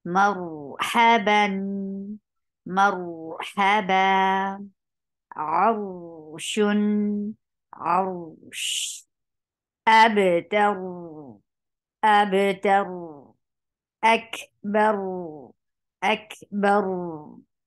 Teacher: Tawassut is a medium flow of sound. You are not stopping ra abruptly, neither you are giving it a very long sound, but a medium flow of sound.